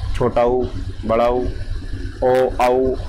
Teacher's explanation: तो भाषा विज्ञान की दृष्टि से ऊ तथा बड़ा ऊ पश्च संवृत स्वर हैं। जिन स्वर के उच्चारण में जीभ का पीछे का भाग कार्य करता है उन्हें पश्च स्वर कहते हैं